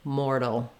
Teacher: when we're doing mortal, our T becomes a flap, so it sounds more like a D. So I've written it for you here with the D-U-L-L, dull, but really there's not much vowel there.